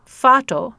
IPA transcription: fætɔ